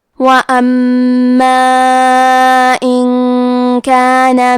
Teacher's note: حرف المیم کی تشدید کو ظاہر کریں گے اور اسے 2 حرف کے برابر پڑھیں گے